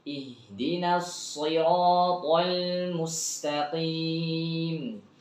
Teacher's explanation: Makhrajnya bukan di shin ya. Huruf shad ini bukan makhrajnya huruf shin tapi makhrajnya huruf sin. Sama kayak S biasa saja. Cuman bedanya tebel suaranya.